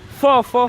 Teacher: intervienen el órgano de los dientes y los labios siendo el labio inferior y los dientes superiores